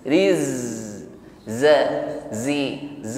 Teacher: shafir bunyi desis pada huruf zai yang bersukun lebih kuat ya. Jadi sifatul huruf ketika tasydid, ketika sukun maka akan lebih nampak, lebih jelas.